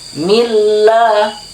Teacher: untuk yang mil tidak boleh terlalu lama ya. Milla cukup 1 harokat saja.